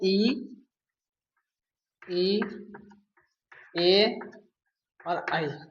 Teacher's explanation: तो मुख की जिभ्या की स्थिति के आधार पर जो स्वर होते हैं वो हमारे तीन स्वर होते हैं। पहला है अग्र स्वर जो जीभ के अगले हिस्से से बोले जाते हैं। इसमें हमारे स्वर आते हैं इ ए और ऐ।